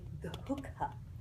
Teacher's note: Because there's a visarga right in the middle. So you have to give this little sacrifice of breath, immediately followed by a mahaprana